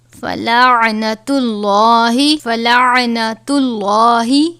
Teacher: لام سے پہلے پیش ہے، لام کو پر پڑھا جاتا ہے